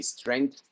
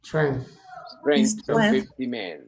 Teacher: la TH al final es algo así como una fricción entre lengua y dientes incisivos superiores